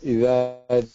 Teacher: the dhal in the إذا, it has to be where your tongue is sticking out slightly to touch the top part of your top two teeth, okay?